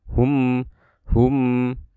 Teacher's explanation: Kita akan lafalkan mimnya dengan suara gunnah, ya. Hum, seperti itu.